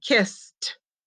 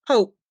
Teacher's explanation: So the ed sounds like t when it follows any of the voiceless consonants. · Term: t sound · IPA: /t/